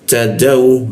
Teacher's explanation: Ujung lidah itu kita tempelkan ke gigi ta, ada bocor halus dia